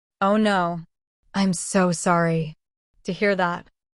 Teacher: Notice how the tone is lower and slower.